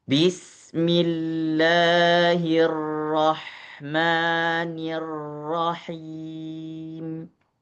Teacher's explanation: Ada ro yang bertasydid maka lebih ditahan satu harakat minimal